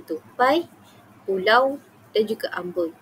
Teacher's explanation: geluncuran lidah bermula di posisi vokal pertama, kemudian bergerak ke posisi vokal kedua tanpa hentian. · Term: diftong